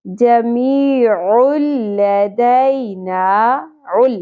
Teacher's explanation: عین کے اوپر دو پیش تنوین کے بعد لام اور را, آپ کو پتہ ہے دو ایسے حروف ہیں جن کے ساتھ ہم تنوین یا نون ساکن کو ادغام بغیر غنہ کرتے ہیں. غنہ کی آواز, نون کی آواز یہاں سے بالکل ہی سکپ ہو جائے گی.